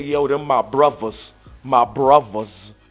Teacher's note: when you go up north they don't even say Brothers they pronounce the T and the H with a V they say yo them my brothers my brothers with a V